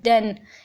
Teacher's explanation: जबकि द जो है ना, जैसे कि ये वर्ड सामने लिखा भी हुआ है देन, इसमें ये जो साउंड यूज़ हुआ है ये वॉइस्ड है क्योंकि इसमें वाइब्रेशन होती है